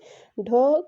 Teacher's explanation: ढ का उच्चारण स्थान भी मूर्धन्य है और ये भी सघोष और महाप्राण है।